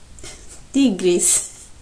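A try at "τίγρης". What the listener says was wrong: No, you go on tea again.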